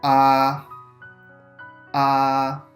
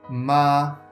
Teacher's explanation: The first tone is pronounced with a high level pitch, like ah, ah.